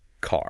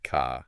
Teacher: it's strong it's rolled almost like a little drum roll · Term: the American R